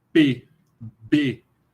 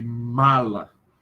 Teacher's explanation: Os dois lábios, o inferior e o superior, se encontram. O lábio inferior é a parte ativa. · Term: bilabiais